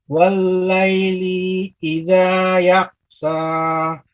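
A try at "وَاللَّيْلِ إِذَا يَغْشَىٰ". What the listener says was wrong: Ya, wal-laili. Li-nya itu pendek, sehingga harus dibaca dengan cepat.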